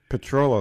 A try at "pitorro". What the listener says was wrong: You gotta roll the R's.